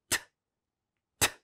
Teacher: you have the tip of the tongue approaching the alveolar ridge and touching the alveolar ridge and holding that air that's coming in from the lungs and creating that pressure that builds up behind the alveolar ridge and then just suddenly releasing it, causing t, t.